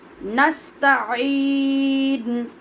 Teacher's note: عین کو حلق کے درمیان سے پڑھیں گے. نستعین نہیں پڑھیں گے، حمزہ نہیں، عین.